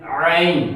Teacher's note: عین جو ہے یہ حلق یعنی گلے کے درمیانی حصے سے ادا ہوتا ہے